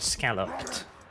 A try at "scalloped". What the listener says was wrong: You pronounce those both the same. You said scallop twice.